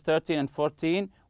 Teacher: we stress the first syllable when we are counting